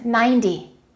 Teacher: when we have a number that finishes with a zero usually the t y sounds like a d y so we don't say 90 we say 90. if you say